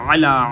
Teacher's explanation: مر علا حمزہ کے ساتھ علا پڑھیں گے، غلط ہوگا، علا عین کے ساتھ، عین کو گلے کے درمیان سے نکالا جاتا ہے۔